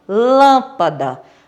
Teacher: Proparoxítona é quando a sílaba tônica é a antepenúltima, como a palavra lâmpada. A sílaba tônica da palavra lâmpada é lã.